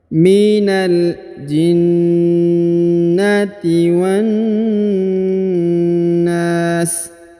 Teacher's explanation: Huruf wa langsung sambung masuk ke huruf na, ditahan dan ditekan, lalu dipanjangkan 2 harokat ya, karena di depan huruf na terdapat alif. · Lalu huruf na dipanjangkan boleh 2, boleh 4, boleh 6. Karena di depan huruf na terdapat alif.